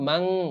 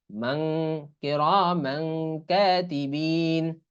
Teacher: কিরামান কাতিবিন, কোরআনের আয়াত, তাহলে মিম আলিফ দুই জবর মাং, তারপর যেহেতু কাফ আসছে, এই তানভিনের পরে কাফ আসলে এই ইকফা গুন্না হয়, এজন্য কি হবে, মাং, কিরামান কাতিবিন।